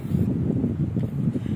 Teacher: Datangkan syiddah dulu, baru datangkan hams.